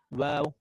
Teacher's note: Waw, pronounced by the rounding of both lips.